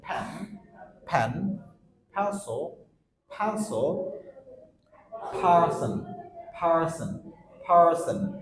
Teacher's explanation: দুই ঠোঁট একসাথে পড়ে আমরা উচ্চারণ করছি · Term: পি সাউন্ড